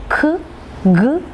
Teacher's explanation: Velar sounds are produced by touching the tongue, back of the tongue against the soft palate or velum, and thus we produce the velar sounds k, g, and Okay, you can feel it. · You are using the pressure. The tension is at the back of the tongue and it is set against the soft palate or velum.